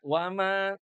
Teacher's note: Jadi kalau berhentinya di wama kembali ke aslinya dua harakat. Jangan kalau berhenti di mad jaiz munfasil itu jadi empat.